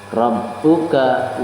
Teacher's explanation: ro-nya di situ adalah berharokat fathah, maka ro di situ adalah ro tafkhim.